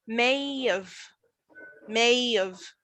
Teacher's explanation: i don't say have anymore so i don't have a consonant i have a vowel i say of i don't say have i say of so i say yes then after deleting the